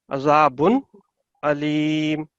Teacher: नून को हमने clearly 1 second तक पढ़ना है, उसको लंबा नहीं कर सकते हम